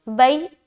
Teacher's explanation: یا ساکن سے پہلے زبر یا لین نرمی کے ساتھ ادا کریں گے